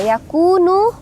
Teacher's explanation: yakunu dah bertemu dengan wau mati disebut dengan mad thii dibaca Dua harakat